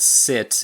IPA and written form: sɪt (sit)